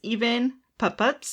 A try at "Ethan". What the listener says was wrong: Ethan. You said even.